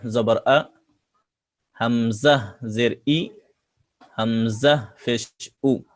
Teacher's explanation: হামজা কণ্ঠনালীর শুরু থেকে হামজা অক্ষর শক্তভাবে পড়তে হয়।